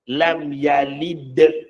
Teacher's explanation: Bila dal tu jadi kubra, apabila tiada lagi suku kata selepasnya. Dengan makna wakaf, dengan makna berhenti.